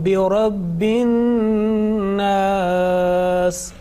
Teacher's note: this is the nasal sound. You are making gunna here on an-nas.